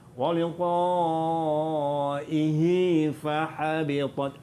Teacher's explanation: Ni kita jumpa hukum baru Mad silah. Mad silah qasirah pendek. Jadi baca dia waliqaihi fahabitat 2 harakat.